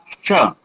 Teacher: जब तालव्य सकार बोलेंगे तो जिह्वा के अग्रभाग से थोड़े से पीछे वाला भाग तालु के पास जाएगा, श। और जब हम मूर्धन्य सकार बोलेंगे तो जिह्वा का बीच वाला भाग मूर्धा के पास जाएगा